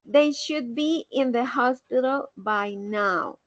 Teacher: no decimos should con l sino que decimos sh quitando la L y agregando solamente la de sh muy bien por aquí tenemos